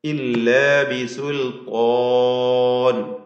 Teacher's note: ത്വാ എന്ന ദീർഘം ത്വാഉം അതിൻ്റെ അലിഫും തഫ്ഹീം ചെയ്ത് ഉച്ചരിക്കുക